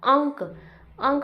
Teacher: इसमें अनुनासिक बना देते हैं बिंदी लगा दिया जाता है अंक अंक में नाक से आवाज आ रही है यह अनुनासिक है